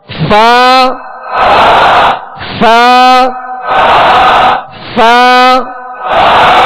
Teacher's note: عین غین غین فا فا فا مخارج کی لسٹ میں فا کا مخرج بھی آپ ملاحظہ فرمائیے. اوپر کے دانتوں کے کنارے اور نچلے ہونٹ کے تر حصے سے فا ادا ہوتا ہے